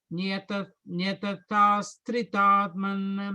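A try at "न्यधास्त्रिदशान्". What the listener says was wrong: You think you're putting an extra the there. It's just Nyadhas Tridaman.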